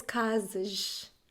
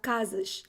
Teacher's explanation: And in Carioca, it's casas, like plural, casas. Everything is sh.